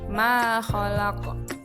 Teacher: ma dibaca panjang 2 harokat atau ketukan dan dinamakan mad asli atau mad tabi'i